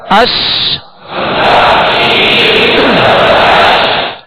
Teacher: اس کی شین کی ادائیگی میں آواز منہ میں پھیل جائے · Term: تفشی